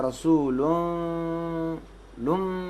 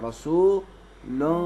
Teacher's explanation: تنوین کو میم میں چینج کریں گے، لیکن ایسا میم کہ جس پہ ہونٹ آپس میں نہیں ملیں گے